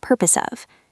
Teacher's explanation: The S and the O melt together. · If you say it slowly, it is purpose of your. But a native speaker will link the S in purpose to the O in of. It sounds like purpose of.